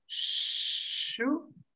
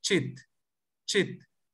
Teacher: La primera tiene un ceseo, shu, y la otra es cortante, chit, chit. Entonces es cortante.